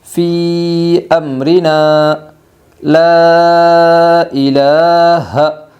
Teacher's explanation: مد منفصل کو 3 الف کی مقدار کھینچ کر پڑھے گی